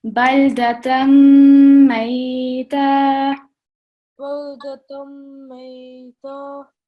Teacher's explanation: a bit more time on the meme joining with the ya sakin because it's a lean letter, so we prolong for 2 seconds